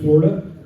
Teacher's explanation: they take 3 syllables and turn it into 2